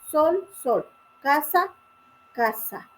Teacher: S. Fricativa, alveolar, sorda. Posición inicial de palabras y entre vocales, es decir, que se usa en la mayoría de las posiciones como al inicio de una palabra o entre vocal.